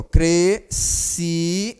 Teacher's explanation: O som é apenas um. Esse S, a gente não escuta o som dele